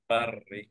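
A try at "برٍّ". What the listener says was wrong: বার এরকম না কিন্তু, হ্যাঁ। বাররিন। বাররিন। এখানে তাকরির হচ্ছে, হেভিটা একটু বেশি তাকরির হয় হালকার চেয়ে, হ্যাঁ, বাট তোমার হালকাটাই বেশি তাকরির হচ্ছে।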